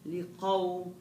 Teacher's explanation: الآيات لقوم شايف القاف نفصل الآيات لقوم لا انت اول اشي رجع القاف شوي لورا عن المخرج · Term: مخرج القاف